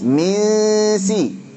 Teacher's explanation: Nun sukun ketemu sin, ikhfa hakiki pada nun sukun ketemu sin dibaca tipis. Gunnahnya tipis.